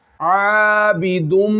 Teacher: यहाँ हम खींचेंगे आइन को, क्योंकि आइन जो है यहाँ पे इसके साथ अलिफ मद्दा है, ज़बर आ रही, अलिफ मद्दा है, ये जायद अलिफ नहीं है, जायद अलिफ नून में ही होता है।